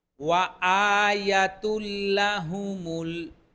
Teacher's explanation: ওয়া বললে দুই ঠোঁট গোল হবে